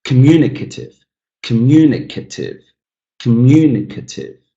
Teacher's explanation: we've got 5 syllables, and the second one is stressed.